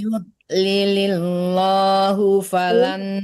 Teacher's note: lam Allahnya tipis karena sebelum lam Allah harakatnya harakat kasrah ya. Yudlilillah tipis kan lam Allah.